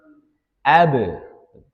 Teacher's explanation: huruf ba itu termasuk qalqalah dia mantul. Ab bukan abat talob.